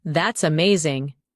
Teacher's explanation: When you say that's amazing, your tone rises with excitement. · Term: intonation